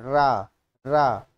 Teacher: तो ये रा में देखिए आपकी जीभ होती है बहुत तेज तेज वाइब्रेशन करती है, बहुत मतलब लुढ़क के, तो इसको बोलते हैं लुढ़क के आता है। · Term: लुंठित व्यंजन